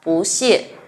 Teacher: Ở đây mình có từ bú mang thanh 4, tuy nhiên khi kết hợp với âm tiết mang thanh 4 thì nó sẽ đọc là bú. Đây người ta gọi là biến điệu của bú.